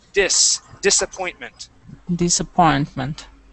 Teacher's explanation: that S will not be pronounced like a Z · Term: S sound